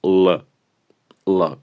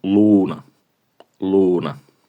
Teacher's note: Y hay un detalle, puesto que nuestra L está justo en el punto intermedio fonético entre la L de forma dura y la L de forma blanda que hablábamos en el vídeo anterior, que todas las consonantes tienen. Entonces, la L en su forma dura suena más gutural